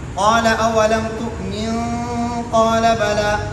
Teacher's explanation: نون ساکن کے بعد حروف اخفا آیا ہے، اس کی وجہ سے اخفا ہوا ہے